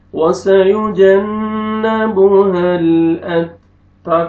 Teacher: نون مشدد ہے غنہ کریں گے